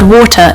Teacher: So, the word water in RP, the T in the middle is clearly a T.